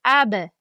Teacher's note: Kaftimizni tutamiz. Ab hech qanday havo urilmasa, jarangdor harf hisoblanadi. Jarangli, ya'ni jahr.